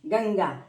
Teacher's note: તો જુઓ બોલીએ ગંગા, તો અનુસ્વારની પછી ગ આવ્યો છે. ગ ક વર્ગનો છે, ક વર્ગનો અનુનાસિક અંગ છે અને એટલા માટે એ બોલવાનું ગંગા.